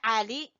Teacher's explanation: आइन को गले से निकालेंगे